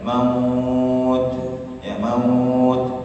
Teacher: Jadi yang terdengar itu hanya hembusan nafas maut. Maka tidaklah terdengar dengan suara yang besar kecuali di sekitar kita saja. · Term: huruf ta